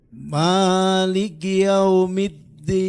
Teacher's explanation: Huruf dalnya gunakan pangkal gigi. Ujung lidah nempel ke pangkal gigi.